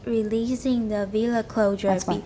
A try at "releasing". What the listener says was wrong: And don't make the E too long. It's not releasing, it's releasing. Anyway, S is not, it's not voiced, so it's releasing.